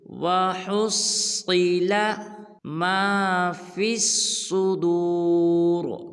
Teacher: صاد کو پر ادا کریں گے